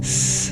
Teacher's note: We have the S, which is formed by putting our tongue against our teeth.